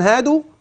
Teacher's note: لاحظ معي حرف المد الواو ماذا صنعنا به لم نزد عن حركتين